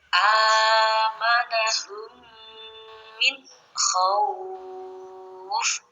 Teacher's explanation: cara membacanya harus ditasdidkan mim yang belakang karena mim yang depan sukun ya. Jadi mimnya ada dua. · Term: idgham mimi